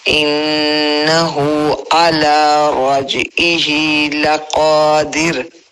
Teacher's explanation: انہ پہ گناہ ہو رہا ہے. رجعہ رج پہ کیا ہے؟ کلکلا ہے. تو اس کو کلکلا کرتے ہوئے آگے نکلنا ہے